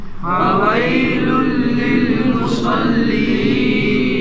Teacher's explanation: تو صاد حروف مستعلیہ میں سے ہے، پر پڑھے جانے والے حروف میں سے ہے